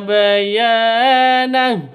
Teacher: Panjang dua ketukan karena ada alif diawali dengan fat fathah mad asli